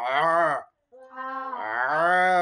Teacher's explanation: আইন কন্ঠনিকে চাপ দিয়ে উচ্চারণ করতে হবে